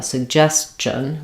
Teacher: So we have in the first G says the sug with the g sound, but it's unreleased. And then the second G starts the stress syllable, and that one is a j sound, like in jump